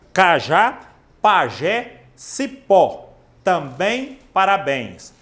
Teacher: palavras que tem a sílaba forte no último na última sílaba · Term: oxítonas